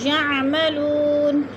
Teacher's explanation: یعملو وہ ساکن سے پہلے لام کے اوپر پیش آ گئے تو ادھر وہ مدہ ہو رہا ہے. وہ مدہ کو 1 الف 2 حرکات کے برابر ہم نے لمبا کر کے پڑھنا ہے